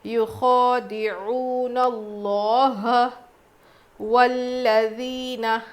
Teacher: لام پہ تجدید ہے، دبا کے پڑھیں گے